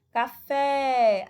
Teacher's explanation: Aí você observa aí que a sílaba tônica é o fé.